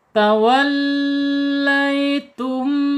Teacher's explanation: ta secara makhraj ada di al-lisan, ujung lidah menyentuh pangkal gigi seri atas. Waw ya, ta secara sifat ada di al-hams.